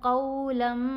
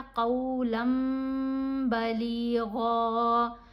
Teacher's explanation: क़ौलन नहीं हमने पढ़ा, यहाँ भी इक़लाब का असूल है। तनवीन के बाद बा है तो हमने नून की आवाज़ को अब मीम की आवाज़ में बदल कर पढ़ा